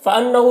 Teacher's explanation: نون مشدد غنہ کے ساتھ پڑھیں گے، ہاں الٹا پیش ہے، اسے بھی ایک الف کے برابر کھینچیں گے۔